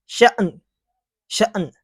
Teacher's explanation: تو حمزہ ساکنہ کو ہمیشہ جھٹکا دے کر پڑھتے ہیں